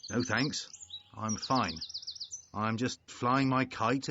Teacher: It sounds very serious. A lot of falling intonations. So he doesn't sound friendly.